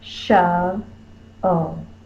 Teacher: The accented syllable in this word is the first syllable. Shove, O. Put the most force on the first syllable.